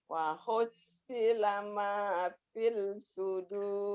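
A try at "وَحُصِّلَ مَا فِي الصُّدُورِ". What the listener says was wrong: Jangan pis. Alif lamnya nggak dibaca kan warnanya oranye tuh. Wahussila ma fis sudur. L-nya nggak dibaca. Wahussila ma fis sudur.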